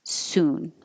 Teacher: Soon is just an oo sound, so round your lips